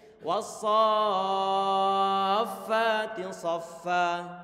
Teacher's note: berarti sonya matnya kita panjangkan sepanjang 6 harokat. Baru kemudian setelah selesai 6 harokat langsung kita tempelkan, ucapkan huruf fa-nya dalam keadaan bertasydid. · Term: mad lazim